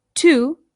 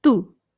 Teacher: you can make the softer T by bringing your tongue right up behind your teeth instead of through your teeth